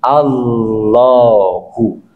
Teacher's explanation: Dalam kaidah tajwid namanya itu tafkhim. Ditebalkan huruf lamnya yang semula tipis sehingga berubah menjadi Allahu. Tetapi lamnya tidak serta-merta seperti lam Allah, enggak, tapi di lebih linear ya, lebih tipis, lebih indah dalam pengucapannya Allahu.